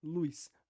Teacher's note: a palavra luz, como ela é realizada com a ditongação, ou com aquela semivogal I, então ela poderia rimar com azuis, já que a sua realização seria algo como luz.